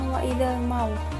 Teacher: terdapat hukum tajwid alif lam qamariah karena ada Al bertemu dengan salah satu huruf Qariah yaitu mim dibacanya alnya ini dibaca dengan jelas